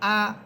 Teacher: আমি কোনো টান দিতেছি না, টান ছাড়া পড়তেছি